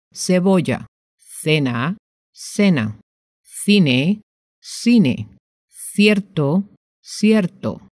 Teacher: In the Americas, the letter C, C, has a phoneme S instead of the th.